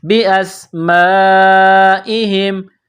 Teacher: سین میں سیٹی کی آواز پیدا کرنی ہے، سین کو باریک کرنا ہے۔